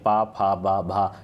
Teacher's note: पा फा बा भा, इसका उच्चारण स्थान जो है किससे होता है? ओष्ठ से होता है।